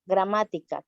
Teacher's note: Siguiendo como un ejemplo tenemos la palabra gramática, que lleva el acento en ma.